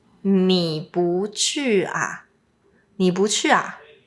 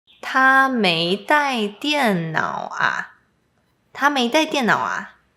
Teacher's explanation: For example, a is a common sentence final particle, and instead of using a high pitch with a question, we often use a lower pitch